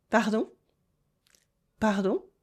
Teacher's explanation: Repeat after me with a little rising tone at the end.